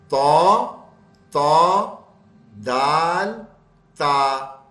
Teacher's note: जबान का किनारा सामने के ऊपर वाले दो दांत की जड़ में चला जाता है।